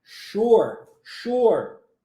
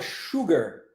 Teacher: nós temos um novo padrão linguístico onde o s tem som de X sure sure isso acontece também na palavra Sugar tá de Açúcar